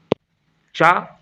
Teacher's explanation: चा का उच्चारण स्थान तालु होता है